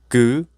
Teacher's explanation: the root of the tongue has blocked the throat